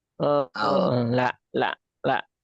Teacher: Tapi kalau kita pelajari lebih jauh ya kita rasakan lebih jauh memang jadi lam itu ya, dia lebih banyak yang nempelnya. Al dibandingkan dengan L ini al itu lebih banyak pinggiran lidahnya ya. Itu lebih banyak la.